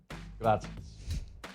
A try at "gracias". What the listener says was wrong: You almost said grazie, didn't you? Sounded like you were going that way.